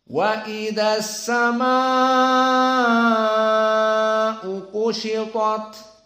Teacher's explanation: Maka mad wajib harus di atas 2 harokat. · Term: mad wajib muttasil